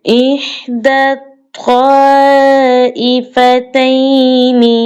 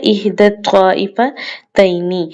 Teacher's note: احدی الطائفتین، یہاں پر قابل غور بات یہ ہے کہ یا کو بھی ہم نے نہیں پڑھنا، الف اور لام کو بھی ہم نے نہیں پڑھنا، اس وجہ سے کیونکہ یہ دونوں حرف ساکن ہیں، اس وجہ سے ہم نے ان کو نہیں پڑھنا۔ دال کو ہم نے ڈائریکٹ طا کے ساتھ ملانا ہے